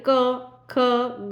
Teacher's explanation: क का उच्चारण स्थल जो है वो कंठ है गले से आवाज आएगी · आप समझ पाएंगे कि गले से आवाज आ रही है क ख ग आप देखेंगे आपके गले से आवाज आ रही